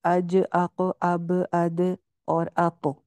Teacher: ٹھیک ہے، یہ قاف، طا، با، جیم، دال، اج، اق، اب، اد اور اق. ان کے اوپر آواز باؤنس بیک کری ہے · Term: قلقلہ